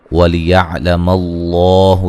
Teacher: لفظ اللہ کو موٹا ادا کریں گے، اس سے پہلے زبر ہے